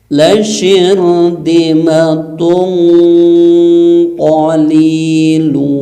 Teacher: tempelkan di huruf qaf sehingga bunyinya tebal ya, karena qaf termasuk huruf yang punya sifat isti'la.